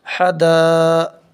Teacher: مد متصل کو 3 سے 4 الف کے برابر کھینچ کر پڑھیں گے۔ · الف سے پہلے زبر ہے، یہاں پر الف مدہ ہوگا۔ الف مدہ کو ایک الف کے برابر کھینچ کر پڑھیں گے۔ حدا، حرف مدہ کے بعد حمزہ اسی کلمے میں ہے، اس لیے مد متصل ہوگا۔